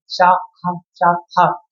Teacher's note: है इसीलिए इसको हम उष व्यंजन के नाम से जानते हैं अर्थात जो वायु होती है हमारे मुख से रगड़ कर के बाहर को आती है